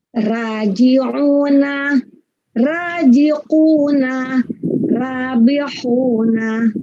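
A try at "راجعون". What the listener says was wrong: Kalau ro sebutnya ra. Nah, kalau tadi yang saya contohkan itu bunyinya mulutnya bukan ra tapi ro. Wow, walaupun mulutnya tidak monjong tapi bunyi suaranya tetap pengucapannya ro. Ro, ya.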